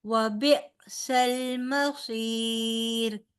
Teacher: بی کیوں پڑھا؟ جھٹکے کے ساتھ ادائیگی ہوگی کیونکہ حمزہ ہے، حمزہ جب ساکن ہوتا ہے تو یہ بھی جھٹکے کے ساتھ اس کی ادائیگی ہوتی ہے